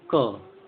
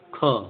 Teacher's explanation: तो कैसे जो सांस को कम लिया जाता है, जैसे आप बोले अ में क ग अंग कम लग रहा है, लेकिन आप ऐसे बोलिए क ख, ख में ज़्यादा वायु आ रही है, क ख, फिर ग घ, घ में ज़्यादा आ रहा है। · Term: महाप्राण